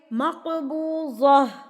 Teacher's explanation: یہ جو گول تا ہے یہ گول ہاں میں تبدیل ہو جائے گی، ہائے ساکن، یعنی کہ ہاں ساکن میں تبدیل ہو جائے گی.